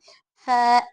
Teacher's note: ऊपर के दो दांत नीचे की होठ को टच होना